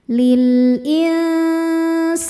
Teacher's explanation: lil in ada ikhfa ausat karena nun sukun bertemu sin. Cara bacanya nun disamarkan ke sin disertai dengung. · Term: ikhfa awsat